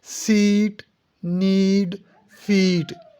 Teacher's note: ये ई साउंड है लेकिन थोड़ा सा लेंथी है, इसको थोड़ा सा लंबा करना है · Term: लॉन्ग वावल